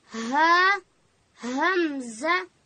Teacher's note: او ها ادا کیږي د ستوني په پای کې